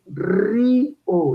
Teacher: vocal cerrada más abierta. Yo pronuncio ri o, la I es cerrada y la O es abierta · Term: hiato